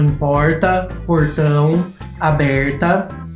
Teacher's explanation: entre outras marcas tem o r retroflexo